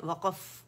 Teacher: काफ साकिन है, वक़फ़ कलकला करेंगे